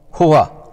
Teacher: اسی مخرج سے حمزہ بھی ادا ہوتی ہے۔ ہا کو حمزہ سے اس طرح ممتاز کیا جاتا ہے کہ اس کو ادا کرتے ہوئے منہ کے اندر کی ہوا کو باہر دھکیلنا ہوتا ہے